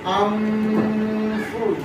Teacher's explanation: Apabila nun mati atau tanwin ketemu 15 huruf ini, maka cara bacanya yaitu disamarkan, dibaca samar. Tidak boleh nunnya itu jelas. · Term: bacaan ikhfa